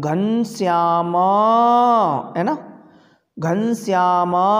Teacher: तीन मात्राओं का समय लगेगा तो उसे क्या कहेंगे प्लुत कहेंगे